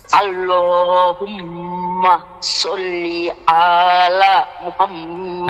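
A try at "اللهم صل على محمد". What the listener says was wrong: আচ্ছা শোনেন, সল্লি আয়ের মধ্যে টান দিছেন, এই জন্য আপনার ভুল হয়েছে। সল্লি আলা, আলা আলা বলেন তো। সল্লি আলা, আলা আলা আলা।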